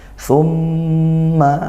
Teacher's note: Thumma mim bertasydid dibaca dengung, dan hati-hati thumma huruf tha bukan sin biasa ya, dari ujung lidah ke ujung gigi seri atas